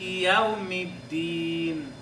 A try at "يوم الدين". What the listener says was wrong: مالك يوم الدين يوم الدين يوم الدين